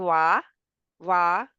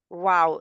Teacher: Yeah, it's a lip letter. So you round both of your lips and they come out as well a bit.